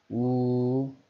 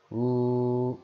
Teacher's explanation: 입술에 힘을 주어서 동그랗게 만든 다음에 발음을 하게 되죠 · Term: 원순 모음